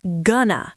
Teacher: For example, I am going to study. In connected speech, we drop the ing and the to. It becomes gonna. So, I am going to study becomes I gonna study.